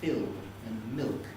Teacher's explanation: we have a dark l where it comes in words like fill and milk and so on